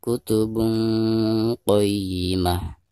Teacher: Perhatikan ada tanwin dhammah tain lalu berhadapan dengan salah satu huruf ikhfa, di sini huruf qaf ya. Maka cara membaca tanwin yang ada di atas ba tersebut itu harus disamarkan disertai dengan gunah